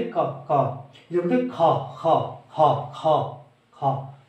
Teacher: महाप्राण में इनमें है की ध्वनि आती है।